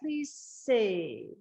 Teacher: So the way we do it is we hold on to the vowel a little bit longer and then we get that S.